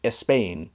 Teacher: a Spanish speaker who tries to say Spain in English will probably say espain